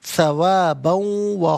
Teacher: با پر دو زبر کی ترمیم، اسے واو کے ساتھ ملائیں گے، واو کی آواز کو ادا کیا جائے گا، یہاں پر یرملون کا قاعدہ اپلائی ہوگا۔